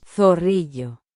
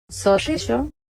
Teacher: This word which means 'skunk' at least in some regions, will be pronounced by most people in Spain with no sibilants